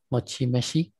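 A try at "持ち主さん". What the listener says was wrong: Mochi me. It looks a lot like a me. Super similar words. That spinny thing always. So mochi nushi san.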